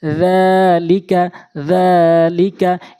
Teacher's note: জালটি একালিফ টেনে পড়তে হবে মদের হরকত হিসাবে